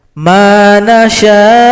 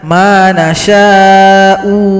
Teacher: Kalau di sini kita berhenti, kebetulan ada waqaf qaflam, al-waqfu aula, lebih diutamakan kita berhenti, maka hamzah disukunkan saja. Manasya Jangan sampai dibaca manasya'u, itu salah. Hamzah langsung disukunkan. Atau kalau lanjut dia dibaca pendek.